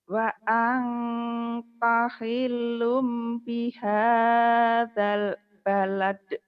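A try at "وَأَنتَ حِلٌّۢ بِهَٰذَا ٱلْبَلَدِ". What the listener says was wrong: D-nya kurang keras tuh kol-kolahnya. Balad da.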